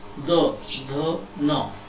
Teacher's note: त वर्ग का जब हम उच्चारण करते हैं तो जिह्वा दांत के पास आकर के स्पर्श करती है।